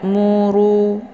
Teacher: jangan kemudian mu dibaca pendek baca pendek ini untuk hukum bacaan r-nya dibaca tebal karena harakat rnya adalah berharakat zumah